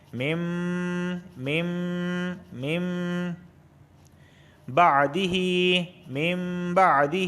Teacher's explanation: نون ساکن کے بعد با آیا ہے تو لہٰذا یہاں پہ اقلاب ہوگا۔ علامت کے طور پر یہاں پر چھوٹے سا میم کو بنا دیتے ہیں، یعنی نون میم میں داخل ہو جائے گا۔